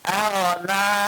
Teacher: pengucapan huruf ghain di sini ditebalkan karena dia huruf istilah